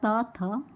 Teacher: अगर आप बोल करके देखेंगे त और थ को तो हमारी जिह्वा दांतों का स्पर्श करेगी, इसलिए दोस्तों इसका उच्चारण स्थान पूछा है तो इसका उच्चारण स्थान दंत होगा, त थ।